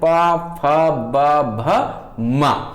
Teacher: पा वर्ग का जो उच्चारण स्थान होगा ये ओष्ठ से होगा